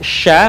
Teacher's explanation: huruf Sya keluar dengan menyentuhkan Tengah lidah kita dengan langit-langit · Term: tafasyi